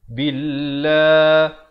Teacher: lafz jalalah dibaca nipis dua harakat